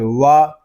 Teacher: واو دونوں ہونٹوں کی گلائی سے ادا ہوگا